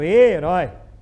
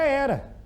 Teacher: O E de herói não é o mesmo E da palavra era. Herói é fechado, herói. Era é aberto. Um é fechado e o outro é aberto.